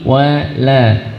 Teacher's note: Wawu huruf tipis, lam huruf tipis, jaga tipisnya, bukan walam tapi wala.